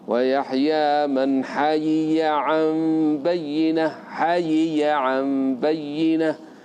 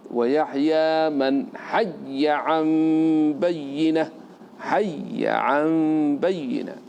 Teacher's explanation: كسر الياء وإظهارها، تنطق بيائين، الأولى مكسورة والثانية مفتوحة